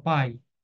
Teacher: o a é vogal o i semivogal porque o a é forte